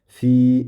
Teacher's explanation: Fi deb ikki harakat cho'zamiz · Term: mad